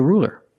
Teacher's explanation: you used a light L because the L is between vowels